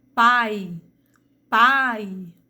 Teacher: O I tem um som mais fraco, o A tem o som mais forte, portanto, é a vogal, e o I, tendo o som mais fraco, é a minha semivogal.